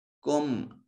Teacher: میم ساکن کے بعد نہ با ہے نہ میم ہے تو یہاں میم کو ظاہر کر کے پڑھیں گے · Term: اظہار شفوی